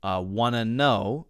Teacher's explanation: between those two words, wanna know, I am continuing my voice.